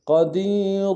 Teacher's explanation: را کے اوپر تنوین غنہ کریں گے اور را کو موٹا ادا کریں گے قدیر وقت کے صورت میں را کو باریک ادا کریں قدیر